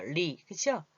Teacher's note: 리을. 이게 혀가 말리면서 입 천장에 가서 붙어요. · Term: 혀가 말리면서 나는 소리